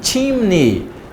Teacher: Eu não pronuncio o som do E, sai o I.